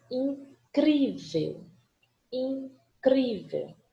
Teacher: Paroxítona, sílaba forte, é a penúltima.